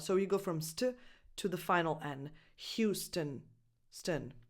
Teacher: Ignore that O. It's not there. It's just a schwa. So you go from st to the final N.